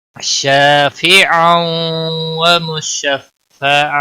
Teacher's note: شافعا تنوین کے بعد حروف یرملون کا واو آیا ہے، ادغام باغنہ ہوگا۔ ایک الف مدہ ہے، ایک الف کے برابر کھینچ کر پڑھیں گے۔